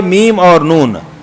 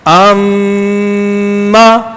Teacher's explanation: میم اور نون پر خاص توجہ دینی ہے کیونکہ یہاں پر شد والی ٹھہراؤ کے ساتھ غنہ بھی ہو رہا ہے, تو غننے کی دیر بھی ایک مزید اس پر ایکسٹرا ہوگی.